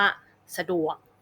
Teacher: จะเน้นน้ำหนักเสียงที่ดวกสระจะออกเบาๆไม่ลงน้ำหนักนะคะ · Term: พยางค์ไม่ลงน้ำหนัก